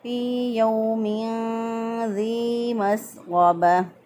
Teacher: यहाँ पर दो ज़ेर की तनवीन, तनवीन के बाद देखा ना हरूफ़ हल्की हलक़ी में से कोई हरफ, ना हरूफ़ यरमलून में से कोई हरफ है, ना ही बा है, ना ही अलिफ है, इसलिए यहाँ पर हमने इख्फ़ा किया। गुन्ना करते हुए एक अलिफ के बराबर गुन्ना की मिक़दार को नाक में ठहरा कर तनवीन की आवाज़ को छुपा कर हमने अदा किया।